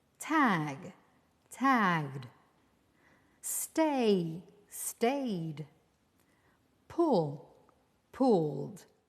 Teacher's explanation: you pronounce a d when the last sound of the verb is voiced as in tag tagged stay Stayed pull pulled